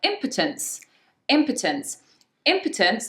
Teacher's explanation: Impotence, the stress is on the first syllable, and it's not an or